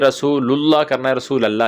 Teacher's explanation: لام کے اوپر زبر نہیں، پیش پڑھنی ہے، اور لام لفظ اللہ کی جو لام ہے اس کو موٹا پڑھنے کی کوشش کرنی ہے، رسول اللہ ایسے پڑھنے کی کوشش کرنی ہے، اور آخر میں ہا بھی اگر واضح ہو جائے تو زیادہ بہتر ہے کیونکہ وہ ساکن ہو جائے گا۔